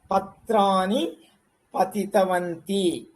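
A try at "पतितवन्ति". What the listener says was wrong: వంతి, దీర్ఘం రాకూడదు. వంతి.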